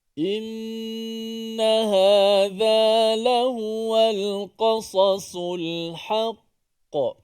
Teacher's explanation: Ada dua huruf sad di situ, yang mana huruf sad merupakan huruf yang kuat sedikit. Huruf yang kuat kerana dia bersifat dengan tebal.